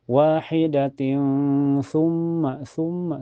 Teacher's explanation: Lebih lengkapnya ikhfa a karena tanwin kasrah ketemu tsa. Cara bacanya tanwin kasrahnya disamarkan ke tsa dan ditahan sampai terasa ke hidung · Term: ikhfa hakiki, ihfa hakiki